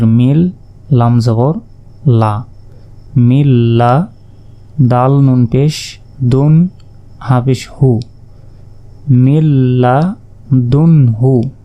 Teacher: মিম গিয়ে কাকে ধরবে এই মিম গিয়ে সরাসরি লাম কে ধরবে আর নুন সাকিনের পর লাম অক্ষরটি এসেছে তাই এখানে গুন্না ছাড়া মিলিয়ে পড়তে হবে